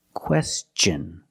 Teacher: when t n is after an S then it's pronounced differently it's pronounced with the CH sound the hard CH sound